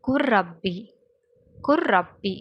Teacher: அப்போ லாமை வெளிப்படுத்தாமல் லாமையும் ரவையும் இணைச்சி ஓதணும். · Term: இதுகாம் முத்தகாரிபைன்